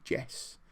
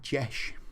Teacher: I sometimes turn the S into a sh sound